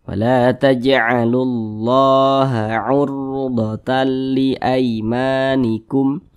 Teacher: huruf r sukunnya dibaca tebal dibaca tafkhim sehingga pangkal lisan kita itu naik terangkat ke atas ketika kita mengucapkan nya huruf rnya itu ditebalkanalimanikum nan ditebalkan kemudian